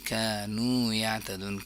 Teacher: कानू दोनों लंबा हो जाएगा अलिफ मद्दा और व मद्दा है · كانوا دونوں لمبا ہو جائے گا. الف مدہ اور واو مدہ ہے